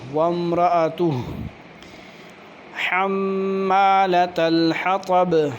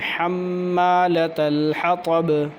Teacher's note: میم مشدد ہو تو اس پہ بھی غنہ ہوتا ہے، ناک میں آواز جاتی ہے۔ حمالۃ الحطب، اور طا موٹا ہے، با پہ قلقلہ ہے۔